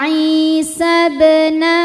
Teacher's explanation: maka dibacanya dipantulkan dengan pantulan yang kecil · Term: Qalqalah